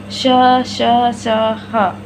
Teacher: इनके उच्चारण में निश्वास वायु घर्षण के साथ यानी टकराते स्पर्श करते हुए मुख से बाहर निकलती है, अतः इन्हें ऊष्म व्यंजन कहते हैं।